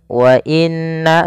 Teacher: Jaiz itu boleh mad panjang, maka di sini na-nya dipanjangkan sepanjang 4 harokat atau 5 harokat. Wa inna, setelah pertama menahan nunnya, kemudian na-nya dipanjangkan lagi. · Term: mad jaiz munfasil